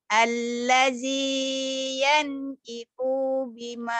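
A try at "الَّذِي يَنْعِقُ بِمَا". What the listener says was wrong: Ikonya pendek, kenapa panjang? Alladzi yan Iko pendek. Alladzi yan ikunya pendek.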